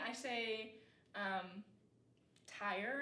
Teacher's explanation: I say tire, and it's kind of like 2 vowel sounds that kind of get meshed together into one. But in Appalachia, they wouldn't have that movement of the vowel, so it might be something closer to tar instead of tire.